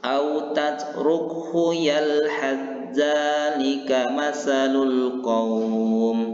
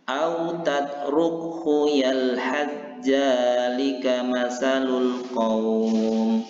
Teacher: Tadi sudah sama-sama kita sampaikan, memasukkan huruf yang pertama ini, huruf sa ini yang berbaris sukun ini kepada huruf yang kedua yaitu huruf zal, dan membaca huruf zal ini seolah-olah bertasdid. Jadi masuk sa-nya kepada huruf zal, tidak ada lagi kedengaran bunyi sa-nya, tetapi dia harus huruf zal tadi. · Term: idgham mutajanisaini